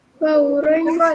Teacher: Ra baris atas dan depan kena tebal. Tak boleh baca ran.